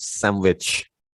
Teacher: N followed by W, and N changes to M before W